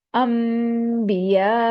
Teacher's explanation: आसानी से अदा करने के लिए नून साकना को मीम साकना में बदल देते हैं